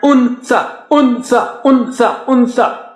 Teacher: Okay, you are touching, if this is the tongue, if this is the tip of the tongue, you are touching the tongue tip, to the top. And tha, when you say tha, again you have to use the tongue tip and just bring it out, the makhraj, little bit between the teeth, or touch the top teeth, little bit of it is out.